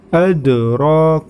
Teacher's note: huruf Dal maka cara membacanya harus memantul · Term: huruf qalqalah